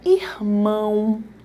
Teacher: O O com som mais brando, que é o som do U, é a tua semivogal.